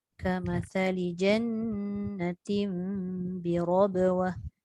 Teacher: Dua-dua dengung dan ra tu tebalkan.